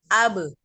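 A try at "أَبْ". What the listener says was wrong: A-nya jangan diangkat, langsung. Abe. Abe.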